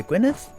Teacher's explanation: Fairly certain that for Welsh double D means a th sound.